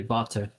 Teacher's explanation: the W's are pronounced with a V sound. So like it'd be like um, you say like ich habe Durst, ich habe Water instead of like the rest of Germany where they say Wasser.